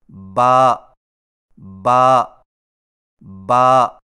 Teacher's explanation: با کی ادائیگی میں ہونٹوں کے گیلے حصے کو سختی سے ملا کر باریک آواز میں پڑھیں